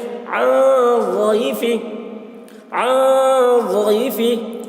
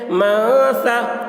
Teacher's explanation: نون کی آواز کو ناک میں چھپا کر پڑھیں گے، اس کو اخفا کہتے ہیں